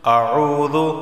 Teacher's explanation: واو ساکن سے پہلے پیش ہے تو اسے ایک الف کے برابر کھینچ کر پڑھا جائے گا